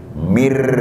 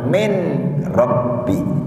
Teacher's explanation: Nun sukun berhadapan dengan huruf ro, ro kan? Itu menurut ilmu tajwid hukumnya idgham bila gunnah.